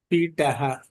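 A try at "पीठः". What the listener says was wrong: One more time. Pitaha. You have to say the Mahapranaha because Thaha is Mahapranaha. Can you pronounce it one more time?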